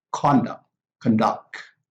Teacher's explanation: the stress is on the first syllable for a noun, and for a verb, the stress is on the second syllable